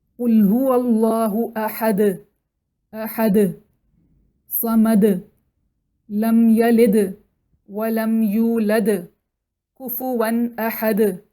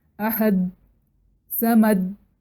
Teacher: اسی طرح سے حرف کی صفات، مطلب اگر ہم سورہ اخلاص کی مثال لیں، سورہ اخلاص کی ہر آیت کے آخر میں دال سکون کے ساتھ پڑھا جاتا ہے، اور دال سکون کے ساتھ جب آئے تو اس کی خاص صفت ہے کہ وہ باؤنس کر کے پڑھا جاتا ہے، جس کو قلقلہ کہتے ہیں۔